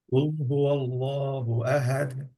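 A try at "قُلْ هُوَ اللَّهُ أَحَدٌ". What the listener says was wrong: হ্যাঁ, চাপ হচ্ছে না। আহাদ। দেখেন কুল হু আল্লাহু বলেছেন কেন? কুল হু ওয়াল্লাহু ওয়াও দিয়ে ওয়াল্লাহু আহাদ।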